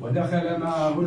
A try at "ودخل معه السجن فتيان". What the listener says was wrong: ده خا مش خاء.